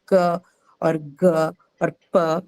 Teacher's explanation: when I say k or g or p, that the last sound that you hear is what is called a shwa. So it's mostly an inbuilt vowel that comes along with most of the consonants, and it is unstressed.